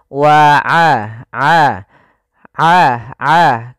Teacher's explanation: kalau kita pencet hidung kita itu suaranya tetap mengalir dan tidak berdengung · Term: sifat ainnya